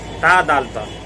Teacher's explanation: ता, दाल और ता, ये तीनों का मखरज एक ही है, यानी ज़ुबान की नोक और सनाया उलिया की जड़।